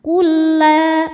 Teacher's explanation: huruf yang sama persis makhraj dan sifatnya bertemu cara membacanya adalah huruf yang sukun lam sukun dileburkan ke lam yang kedua Jadi cukup kita tekan tanpa harus kita tahan · lam sukun dileburkan ke lam yang kedua. Jadi cukup kita tekan tanpa harus kita tahan. Kulla, kayak lam tasydid biasa aja ya. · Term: Idam mutamilain, idgham mutamatsilain